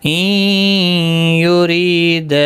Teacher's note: ری یا مدہ ہے، دا مد منفصل ہے، 3 الف کی مقدار کے برابر کھینچ کر پڑھیں گے · نون ساکن کے یرملون کا یا ادغام مع الغنہ ہوگا